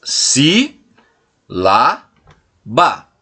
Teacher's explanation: Já a palavra sílaba, ela é composta pelas sílabas si, lá, ba, sendo a antepenúltima a sílaba mais forte que eu pronuncio.